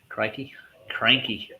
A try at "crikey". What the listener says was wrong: Crikey. It's not crocky. It's crikey. It's like crying with keys. Crikey. Crikey. But you gotta pronounce it like a crock almost at the same time. So it's crikey. Crikey.